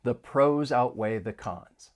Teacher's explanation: We can link the final consonant sound in pros with the vowel sound in outweigh. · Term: linking